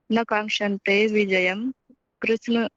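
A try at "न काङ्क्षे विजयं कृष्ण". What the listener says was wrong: न कांक्षे, आप शायद त भी पढ़े उसके साथ। न कांक्षे विजयम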